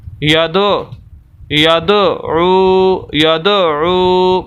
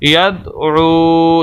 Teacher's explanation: تو دال کی آواز کو ہلائیں گے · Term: قلقلہ